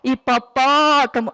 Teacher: na palavra hipopótamo a sílaba mais forte é a sílaba pó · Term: sílaba tônica